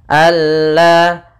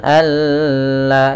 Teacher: idgham kamil yaitu nunnya hilang langsung kepada huruf lam